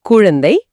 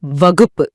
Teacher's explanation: நீங்க உச்சரிக்கும் போது குழந்தை வகுப்புங்கறதுல வர்ற கூ முழுமையா ஒரு மாத்திரை அளவு ஒலிக்குது